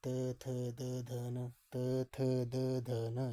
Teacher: दंत्य व्यंजन यानी कि दांतों से